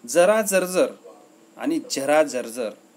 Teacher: यातील ज चे उच्चार तालव्य ज आहेत.